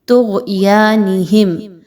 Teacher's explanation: فا زیر یا فی، یہاں پر دیکھیے تو 2 حرکات کے برابر یا مدہ کو لمبا کر کے پڑھا جائے گا. طغیانہم، غین حروف مستعالیہ میں سے ہے، اس کو خوب موٹا کر کے پڑھا جائے گا. یا کھڑا زبر 2 حرکات کے برابر لمبا کیا جائے گا.